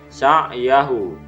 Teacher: sa'yahu dhamir ha dibaca panjang 2 harokat